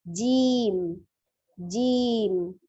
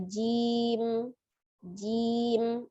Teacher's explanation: huruf jim berkasroh, kemudian berhadapan dengan ya sukun, dan mimnya disukunkan. Maka dia panjang 2 harokat. Jadi pengucapan jim bukan jim, Begitu tapi jim.